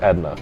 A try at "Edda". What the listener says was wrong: That's Edna. Where's the N in there? Yeah, where's the N in there? How did you read that as Edna?